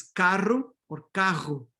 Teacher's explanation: you can have the trill and the fricative between vowels, in fact, being the opposite of BP and EP